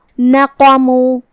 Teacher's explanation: قاف حروف تفخیم میں سے بھی ہے تو ہمیں قاف کو بھاری آواز میں پڑھنا ہے